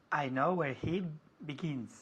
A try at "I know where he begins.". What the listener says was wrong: Muy bien.